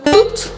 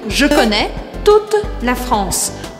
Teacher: Com esse E no final, ele me faz pronunciar o T. Ou seja, eu não falo E, mas eu falo o T.